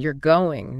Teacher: Voice goes up at the end. You're going. Now it's a question.